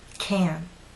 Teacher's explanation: What also may help is to understand how do you move your lips, how do you move your tongue. The stressed can makes you pull your lips out, and your tongue is rather flat and pushed forward.